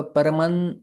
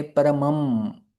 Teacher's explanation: न में हमारे ओठ एकत्रित नहीं आते हैं, लेकिन म बोलते हैं तो दोनों ओठ एकत्रित आ जाते हैं, क्योंकि वो ओष्ठ शब्द है। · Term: अनुस्वार